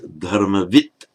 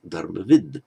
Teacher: So when you see dharmavit, that simply means that the D has changed to a T by the general rules of sandhi. And of course, if in a sentence it's followed by a word that beginning with a voiced consonant or a vowel, then of course it would revert to being dharmavid.